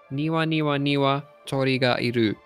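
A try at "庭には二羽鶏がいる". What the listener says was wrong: I think you forgot a niwa. Niwa niwa niwa niwa tori ga iru.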